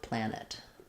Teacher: The ah after a T is going to be a little different. So for planet, you want the ah vowel, the n, and then a schwa or an I sound